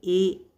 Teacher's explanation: अर्ध संवृत में ए यानी कि मुंह खुलेगा भी और फैलेगा भी